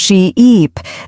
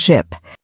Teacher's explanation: A great way to practice this is by exaggerating the long vowel sounds. Say sheep and stretch the E sound she-eep, then say ship with a short sound